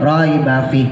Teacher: pas belakang fihnya harusnya panjang, dibaca pendek